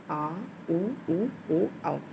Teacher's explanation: पश्च स्वर जिनके उच्चारण में जीहवा का पिछला भाग होता है उसे पश्च स्वर कहते हैं।